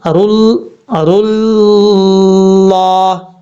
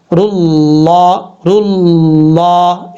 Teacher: زبان کا جو سیرا ہے نا، سامنے والا جو فرنٹ والا حصہ ہے، یہ آپ نے یہ سن لیں پہلے، رل، یہ جو سامنے والے دو دانت ہیں ان کی جو جڑیں ہیں ان سے تھوڑا سا اوپر کی طرف لگائیں گے، زبان اوپر کی طرف اٹھائیں گے تو فل موت پڑھا جائے گا، رل، اس طریقے سے۔